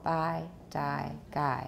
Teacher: bye die and guy with no voicing and no aspiration